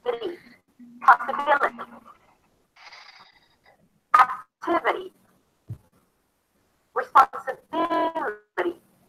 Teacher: The I turns into an the T is a flat T, so it's a D sound, and then a high E at the end.